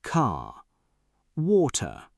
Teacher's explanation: in British English, you often soften or drop the R at the end of words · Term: The R sound